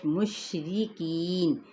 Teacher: را باریک ہوگا اپنے کسرہ کی وجہ سے، کی پہ یا مدہ، نون پہ وقف کیا تو وقف بالاسکان۔